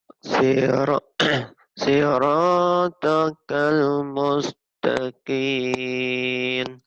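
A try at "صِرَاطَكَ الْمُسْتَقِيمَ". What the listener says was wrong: Kim bukan kin ujungnya M. Nah, nanti ujungnya gini. Sirotokal mustaqim.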